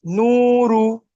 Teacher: ও মাদ্দাকে এক আলিফ পরিমাণ টান দিয়ে পড়তে হয়।